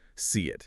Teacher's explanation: And the key thing is, instead of stopping the air or your voice between those words, Yeah. the sound of that final consonant it just carries straight over. It connects to the vowel sounds starting the next word. No pause.